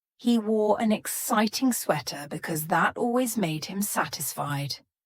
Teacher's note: Here we have a T between 2 vowel sounds, and it's changing to a D.